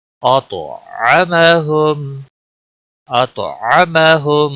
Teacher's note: تو کو موٹا بھی پڑھیں گے اور تو کے اوپر قلقلہ بھی ہوگا کیونکہ حروف قلقلہ میں سے ہے تو.